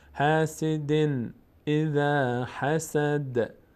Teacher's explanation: اینجا تنوین بعدش همزه آمده، اینجا اظهار میشه، نون از مخرج خودش ادا میشه